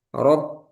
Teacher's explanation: Kaf dia suaranya tertahan rok. Kemudian ada hames. Nah hamesnya itu di ujung rok. Nah, setelah kita lepas itu sisanya namanya Hams.